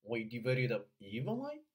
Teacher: We divided up 这个啊特别的短，而前面的 divide 又特别的长，双元音。